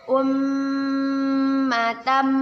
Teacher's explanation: Umma mim bertasydid. Kita baca dengan berdengung dan ditahan 2 harokat. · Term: gunnah